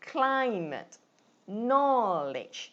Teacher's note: So climate is 2 syllables, you stress on the first one.